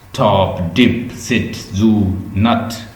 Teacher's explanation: ये टिप of the tongue अल्विलर ridge को touch कर ले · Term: अल्विलर साउंड